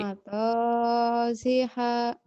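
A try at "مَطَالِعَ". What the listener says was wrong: Ain itu mah bukan H. Mabaji'a ain.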